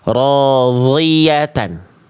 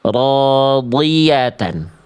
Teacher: makhrajnya dari tepi lidah, dari samping lidah. Boleh kiri, boleh kanan, boleh dua-duanya, nempel ke dinding gigi geraham atas. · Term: huruf dhad